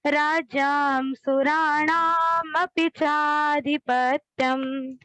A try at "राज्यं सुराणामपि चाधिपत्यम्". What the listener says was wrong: राज्यं सुराणाम् अपि चाधिपत्यम्। ये आ का जो उच्चारण है, जो नहीं है, उस पे ध्यान दीजिए। राज्याम नहीं, राज्यम। बहुत सुंदर बाकी उच्चारण।